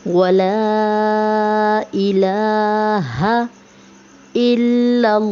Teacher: वला पे जो लाम अलिफ है, अलिफ के ऊपर मद्दा है, इस मद्दा को भी खींचेंगे। और इलाहा, इलाहा की लाम पर जो है खड़ा ज़बर है तो इसे भी खींच के पढ़ेंगे। इस तरह पढ़ेंगे वला इलाहा इल्लल्लाहु।